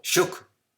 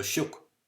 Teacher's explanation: the I before the broad consonant in Munster at least becomes U